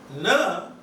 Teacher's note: But na, tip is touching a little behind the teeth. Na, la, ra, it is the tip which is working.